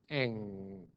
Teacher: N is the voiced alveolar nasal, while Ng is the voiced velar nasal.